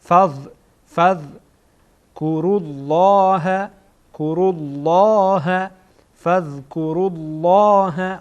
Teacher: ذال سر زبان به سر دندانهای پیشینی که در بالا قرار داره برخورد میکنه، ذال ادا میشه.